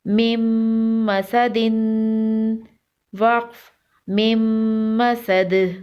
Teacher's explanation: میم مشدد ہے، یہاں پر غنہ کریں گے اور تنوین پر بھی غنہ ہوگا